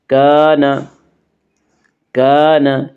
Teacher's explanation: الف مدہ کو ایک الف کے برابر کھینچ کر پڑھیں گے۔